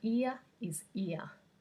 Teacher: the word ear is the same as the phoneme ear in the australian accent because we don't pronounce the r at the end